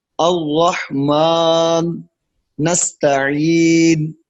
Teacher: اس کے ادا میں موقوف علیہ پر رکنے کے بعد ہونٹوں کو گول کر کے ضمہ کا اشارہ دیتے ہیں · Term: وقف بالاشمام